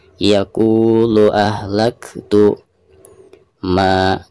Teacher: Ketika membaca maknya di sini dipanjangkan 2 harokat karena dihukumi mad tabi'i ya.